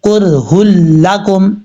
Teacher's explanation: اب یہاں پر 2 پیش کی تنوین ہے ہا کے اوپر، اب یہاں 2 پیش کی تنوین کے بعد لام ہے، یہ دیکھیں ادغام تو ہو رہا ہے لیکن یہاں پہ غنہ نہیں کریں گے